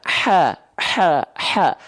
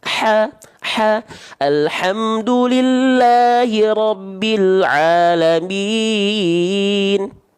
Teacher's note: H kecil dilafalkan dari tengah tenggorokan.